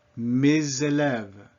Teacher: an S between two vowels has a Z sound